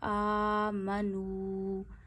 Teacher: اب یہاں ایک اور رول شروع ہوتا ہے جو ہے واؤ مدہ، یعنی واؤ پہ جزم ہو، واؤ ساکن ہو اور واؤ ساکن سے پیچھے پیش ہو تو واؤ کو بھی 1 انگلی جتنا کھینچتے ہیں. تو یہاں پہ نو 1 انگلی جتنا کھینچیے.